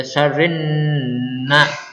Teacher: Karena ini nun tasdid berarti dibaca gunnah. 2 harokat. Yang selanjutnya ada nafasa. · Kalau alif lam syamsiyah, alif lamnya ini melebur kepada huruf setelahnya, yaitu kalau di sini huruf nun. Ya, jadi dibaca syarrinna.